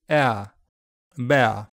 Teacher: Over time, it has smoothed to monophthong, air, bear. The RP pronunciation is diphthongal, starting at the front with a more close jaw and moving to the centre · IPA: /eə/